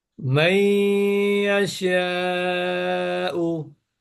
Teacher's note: নুন সাকিনের পরে ইয়া আসছে, তাহলে গুন্না হবে।